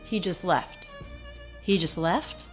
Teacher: He and just, unclear, lower in pitch, lower in volume.